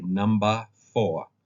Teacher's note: they drop the final R final R in a word is silent